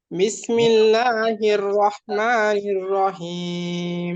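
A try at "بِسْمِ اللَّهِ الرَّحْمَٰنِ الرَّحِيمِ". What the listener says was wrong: নির নির, এই রটা উচ্চারণ একটু সুন্দর করতে হবে। নির রাহিম, নির।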